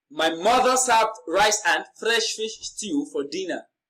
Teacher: now mother is carrying the emphatic stress in this sentence